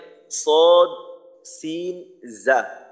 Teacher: জিহ্বার আগা সামনের নিচের দুই দাঁতের পেট ও আগার সঙ্গে লাগাইয়ে উচ্চারিত হয় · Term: 12 নাম্বার মাখরাজ